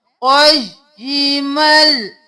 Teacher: बगैर गुन्ना के मीम को लाम में मुदगम करना है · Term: इदगाम बिला गुन्ना